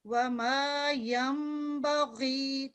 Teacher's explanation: वमा यम बगी, ये नून से बदली हुई मीम है, ये इकलाब का रूल है। यहाँ नून से बदली हुई जब मीम की आवाज निकालते हैं तो इधर 2 सेकंड गुन्ना करते हैं